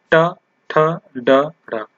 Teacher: तो जब आप ट पढ़ रहे हैं तो देखेंगे आपकी जो जीभ है वो हल्की सी क्या हो रही है? मुड़ रही है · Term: मूर्धन्य ध्वनि